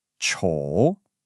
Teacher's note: It dips down, and then it comes right back up. 丑. A super common error is to just make it sound flat, or to only do the first part, the falling part, without the rise at the end. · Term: third tone